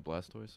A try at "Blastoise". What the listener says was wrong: It sounds like you're saying Blastdoors. Blastoise.